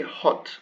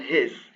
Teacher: hot is a stronger H than his